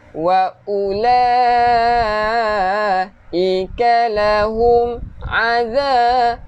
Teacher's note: Hujung lidah keluarkan sikit untuk zal.